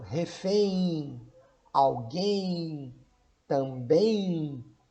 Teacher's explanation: essas palavras têm na sua última sílaba um ditongo decrescente nasal · A pronúncia prolongada da letra M acaba por transformar a letra M na pronúncia em I.